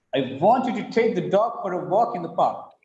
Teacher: Here, want is stressed, take is stressed, dog is stressed, walk is stressed, park is stressed.